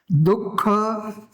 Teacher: સહેજ વિસર્ગ એટલે સહેજ જે હકારનો અવાજ આવે છે. જો પૂરો અર્ધ વ્યંજન હ નહીં, પણ સહેજ ઘોષત્વ આવે, એ વિસર્ગ છે.